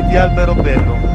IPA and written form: ˌalberoˈbɛllo (Alberobello)